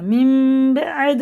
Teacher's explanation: یہ تنوین کے بعد ہے، یہ نون ساکن کے بعد ہے، تو یہ نون کی جگہ میم کو لگا کے پڑھنا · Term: اقلاب